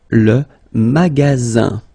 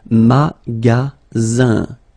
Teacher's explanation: remember you've got only one S between two vowels. Then you get the sound Z